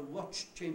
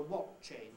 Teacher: if you talk about a watch chain that leaves a ch out in the first word then you've got a watt chain which sounds like some totally different thing so be careful of